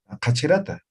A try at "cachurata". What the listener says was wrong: Cachurata con U, cachurata.